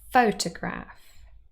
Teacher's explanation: Here we have a word with 3 syllables, and the first one is stressed.